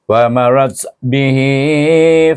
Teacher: Itu kalau kita wakaf. Kalau kita wasal, kita kena menggunakan hukum mad silah qasirah dua harakat. Iaitu kerana ha ini bertemu dengan huruf yang berbaris.